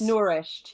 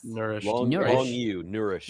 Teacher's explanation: you pronounce both both vowels but not especially elongate either of them